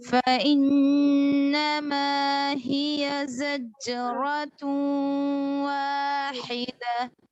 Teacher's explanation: हिया को नहीं खींचेंगे فإنما हिया जल्दी पढ़ना है فإنما هي زجرة واحدة فإنما هي